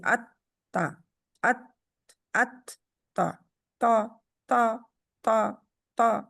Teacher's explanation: ات تا تا تا تا تا، زبان کی جاڑ اوپر اٹھی ہونی چاہیے، اور آگے والا حصہ جو ہے وہ تا زبان کی نوک جو ہے وہ اوپر ثنایا الیہ کے دانے دار حصے سے لگتی ہے، اس کی روٹ جو ہے ادھر، اور پھر پرے ہو جاتی ہے زبر کے لیے، زیر کے لیے، پیش کے لیے، لیکن جب جزم کے ساتھ پڑھیں گے تو وہ اس کے ساتھ جا کے لگ جائے گی، ٹھیک ہے؟